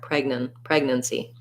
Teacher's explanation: because we're stressing on preg uh we don't have an a sound in pregnancy · So rewriting that, I would just say preg, nun, C, and go really quickly on the nun. There's almost no vowel there. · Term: first syllable stress